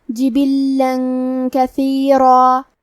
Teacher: کاف حروف الاخفاء میں سے ہے تو ہم یہ حکم کو غنہ کے ساتھ ادا کریں گے